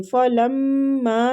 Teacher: میم مشدد ہے، میم مشدد پہ غنہ کریں گے